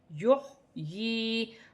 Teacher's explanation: یا ساکن سے پہلے زیر ہوگی تو یا مدہ بنے گی، اسے ایک الف کی مقدار کھینچ کر پڑھا جائے گا